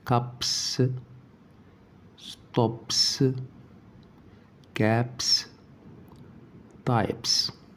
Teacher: لو انتهت الكلمة بالصوت بي وزودنا اس، الاس دي تتنطق اس عادية